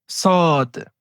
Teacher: pour la lettre صاد, c'est comme pour la lettre sin, à la différence qu'on va devoir lever l'arrière de la langue pour donner à la lettre un son grave. Car le fait de lever l'arrière de la langue fait partie des caractéristiques des lettres qui émettent un son grave.